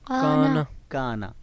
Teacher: تو کانا لفظ میں ہم کاف کو مد کے ساتھ پڑھ رہے ہیں، یعنی کاف کی آواز ڈبل ہے نون کی آواز سے، اور نون کی آواز شارٹ ہے